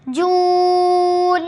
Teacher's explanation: Number 3، مجھول نہیں پڑھنا۔ جیم ادا ہوتا ہے زبان کا درمیانی حصہ اوپر کے تالو سے لگے۔ واو ساکن حرف ہے، واو ساکن سے پہلے پیش ہو تو واو مدہ ہوگا۔